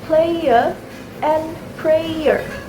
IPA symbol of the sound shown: eɪə